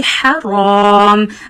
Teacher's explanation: ha is pronounced from the middle of your throat. So read it very softly. Haram. Read raw and alif both in a thick voice because raw we will read here also with a thick voice because it has a sign.